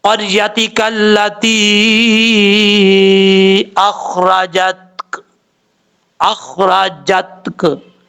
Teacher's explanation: काफ में कलकला भी नहीं होना चाहिए और ना ही ता में कलकला होना चाहिए